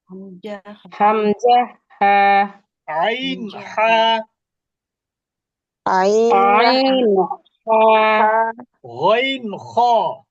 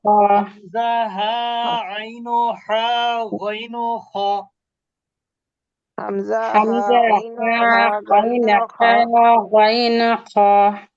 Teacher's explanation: কণ্ঠনালীর শুরু থেকে হামজা হা, মধ্যভাগ থেকে আইন হা, কণ্ঠনালীর শেষ ভাগ থেকে গইন খ। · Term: ইজহারের অক্ষর